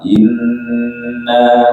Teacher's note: Tanda syaddah itu digunahkan, gunah lama.